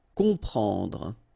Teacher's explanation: You've got OM, and after that you've got a consonant, so you will get the sound on, nasal, okay? You don't hear any M here